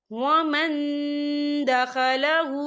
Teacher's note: وَمَن دَخَلَهُ، یا دیکھیں ومن، یہاں نون ساکن ہے، نون ساکن کے بعد جو ہے دال آ رہا ہے، اور دال جو ہے اکفا کا ورڈ ہے، تو ہم یہاں اکفا کریں گے، نون ساکن کی آواز کو ناک میں چھپائیں گے